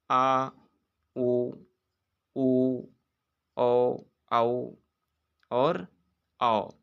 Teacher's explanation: पश्च स्वर की बात करें तो जिन स्वरों के उच्चारण में जीभ के पीछे के भाग में ही प्रयत्न सक्रिय होता है, वे पश्च स्वर कहलाते हैं।